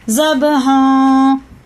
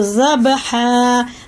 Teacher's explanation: اگر آیت نہیں کرو گے تو اخفا ہوگا زب ہاں، لیکن آیت کریں گے تو زب ہا. 2 زبر تھے، الف نہیں لگے گا.